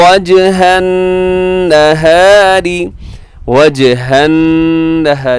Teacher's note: یہاں نون مشدد پہ غنہ ہے، نہاری میں را باریک ہے